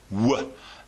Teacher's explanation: our lips start pursed in a circular shape, quite narrowly, and then they widen until we open our mouths quite wide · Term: w sound